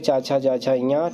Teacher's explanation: च वर्ग का उच्चारण स्थान तालू है